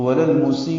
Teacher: مد متصل پڑھیں گے، 4 حرکات سے زیادہ لمبا ہوگا اور حمزہ ساکن جھٹکے سے ادا ہوگا